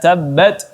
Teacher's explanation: Ya, tabbat, ya, ta yang sukun di sini berubah anginnya seperti tabbat. Ya, ada sedikit bunyi angin yang terkandung dalam huruf ta yang sukun. Jadi dibaca sedikit anginnya.